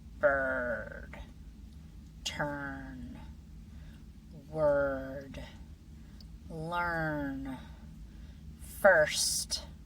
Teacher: R-controlled vowels are different from the vowels we've already learned because your tongue moves back slightly and curls upward toward the roof of your mouth without touching it. Don't touch it.